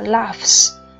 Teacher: laugh tận cùng là F là voiceless, nên chúng ta khi thêm S sẽ đọc là laughs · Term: assimilation of voicing